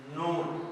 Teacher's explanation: तो नून की अदायगी भी ऐसे ही होगी, जबकि हमारी जुबान जो है ऊपर वाले तालु के साथ नहीं बल्कि मसूड़ों के साथ जाकर लगेगी, वहां पर हम पढ़ेंगे नून, आराम से बिल्कुल नून।